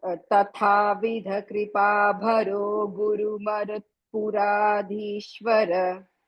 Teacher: తథావిధ కృపాభరో గురుమరుత్పురాధీశ్వర అని అబ్రప్ట్ గా ఆపాలి